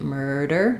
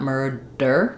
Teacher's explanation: this D is going to be a light flap so keep it light murder not murder not a strong stop of air murderer so